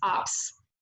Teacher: the vowel sound is not fully formed so he pronounces this word as ops